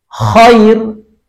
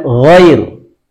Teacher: Yang satu kha, tidak keluar suara, hanya udara saja. Sebaliknya gha, dia keluar suaranya, bergetar tenggorokannya.